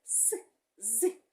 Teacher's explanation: свистячі звуки - це с з які народжуються внизу наших зубчиків нижніх